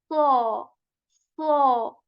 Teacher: Okay, so we are going to make it a bit heavy by raising the back part of our tongue and say saw, saw. We are not going to shape our lips round.